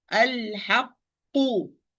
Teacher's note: So there is no qalqala here, even with this qaf, the first qaf, because I close the articulation point. I close the articulation point and start the pronunciation of qaf with sukun, and open the articulation point and pronounce the qaf with dhamma.